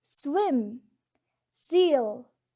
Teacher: The air is forced through the tongue and alveolar ridge, and they are both alveolar